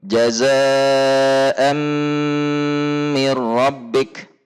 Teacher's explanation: ada tanwin bertemu mim, maka tanwin dilebur baik zat maupun sifat hurufnya kepada huruf mim yang ada di depannya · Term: idgham kamil